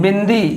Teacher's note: नाक और मुंह दोनों से आवाज़ आ रही है